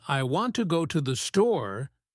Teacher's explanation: the main stress is on want and store